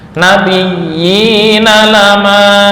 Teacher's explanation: mat tamkin sama dengan mat tobi'i dari segi ukuran panjang. 2 harokat.